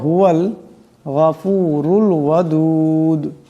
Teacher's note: এখানে র উপর পেশ আছে রা কে মোটা আওয়াজে পড়তে হবে